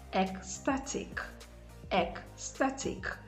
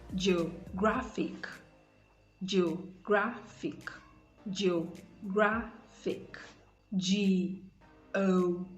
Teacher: So as I said earlier, words that end in IC, like ecstatic, ecstatic, the stress is on the syllable before the last syllable